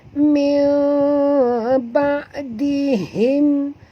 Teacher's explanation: nun mati bertemu ba. Kita kena tukar dengan bunyi nun ini kepada bunyi mim. Sebab itu dia ada tulis mim kat sini ya. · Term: iqlab